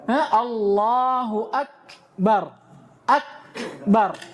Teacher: syiddahnya kaf itu fi awalil harf, pada awal huruf. Maksudnya pada awal kali dia disukun. Adapun hamsnya di akhirnya.